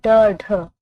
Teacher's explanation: ड ढ उच्चिप्त व्यंजन है, ड ढ, जिनके उच्चारण में जीभ ऊपर उठकर झटके के साथ नीचे आती है